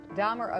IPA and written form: ˈdɑːmər (Dahmer)